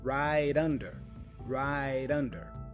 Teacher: the T for right becomes a flap sound which joins with under the vowel U